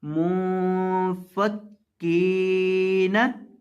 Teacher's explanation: काफ को लंबा करेंगे क्योंकि इसके बाद या है। काफ को एक अलिफ के बराबर आपने लंबा करना है